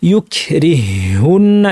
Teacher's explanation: হ্যাঁ, ইউকরিহুন্না, এখানে ছিল ইউকরিহ, একটা হা ছিল, তারপরে হুন্না ছিল, এই হাটাকে আর পড়া হবে না, তাসদিদযুক্ত একটি হা বানিয়ে পড়া হবে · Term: ইদগামুল মিসলাইনের